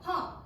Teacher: 허 아주 잘했습니다. 이게 바로 코와 입이 모두 열린 상태입니다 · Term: 비음성